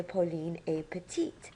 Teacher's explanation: a petite to describe Pauline we would say Pauline a petite we would add an e to petite to make it feminine and we would pronounce the T that comes before the E